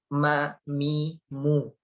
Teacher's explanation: Nah, tetapi untuk suara atau mungkin bukan suara ya, udara keluarnya itu mim itu udaranya keluar lewat rongga hidung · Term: huruf mim